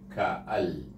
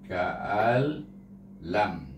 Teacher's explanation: idgham tapi tak ada dengung. Terus masuk amzah dengan lam.